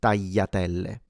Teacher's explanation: Now if this sound is difficult for you, then do keep in mind that there is a second possible pronunciation used in Italy, specifically in the south. So in southern Italy, this le sound that is typical of standard Italian is simplified into a Y. So a lot of Italians do pronounce it datel. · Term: y simplified sound